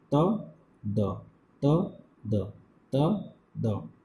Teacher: tongue ka jo aage ka hissa hai wo jaake upper front teeth upar ka jo daant hai usse takrata hai, ye do sound pronounce karta hai.